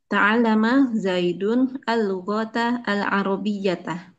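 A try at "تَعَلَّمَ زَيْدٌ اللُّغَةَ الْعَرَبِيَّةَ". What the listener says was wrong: Ahsanti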